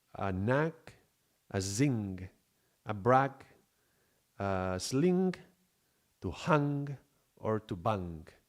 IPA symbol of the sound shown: g